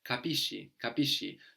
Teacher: when we have SCI or SCE, we get a sh sound